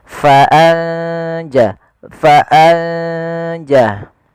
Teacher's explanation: bacaan Ikhfa yaitu kita samarkan ke huruf setelahnya kalau di sini huruf Jim maka nunnya samarkan ke huruf Jin